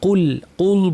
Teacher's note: কুল কফ ভারী লাম পাতলা